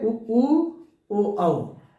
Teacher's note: वृत्तमुखी स्वर वे हैं जिनका उच्चारण करते समय हमारे ओठ क्या हैं? गोलाकार हो जाते हैं